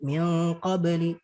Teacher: dia dibaca samar dan juga dengan dengung. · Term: ikhfa